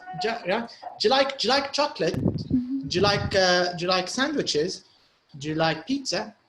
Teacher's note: The do you is tight and it's not stressed.